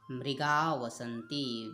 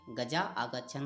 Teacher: वे जो विसर्ग है उसका लोप हो जाएगा। गजाः धन आगच्छन में गजा आगच्छन हो जाएगा, विसर्ग का लोप हो जाएगा।